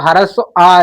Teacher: ये हमारा सिर्फ ह्रस्व आ ऐसा है कि जब इसका हम उच्चारण करते हैं तो हमारा जीभ का जो मध्य भाग है वो हमारा प्रयोग में आता है, इसलिए हम मध्य स्वर कहते हैं।